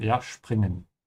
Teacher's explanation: Make sure you pronounce springen with a sch sound. Because whenever the s comes before a p, it becomes a sch sound.